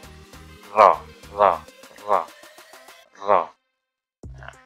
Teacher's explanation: punggung lidah dengan langit-langit sedikit di bawah makhraj noon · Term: huruf ra